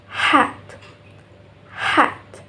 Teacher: And the last sound is the place of articulation is glottal. Glottal is produced in the glottis in the throat, and the manner of articulation is fricative. So the airflow is through a narrow passage and create friction.